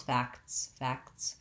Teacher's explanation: This one is challenging because it has three consonants in a row, the k, the t, and the s sounds. And we do say all of these sounds, facts, facts, but you may find that it's challenging to sequence all three.